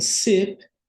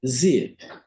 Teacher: som de s não é vibratório né e Zip já é vibratório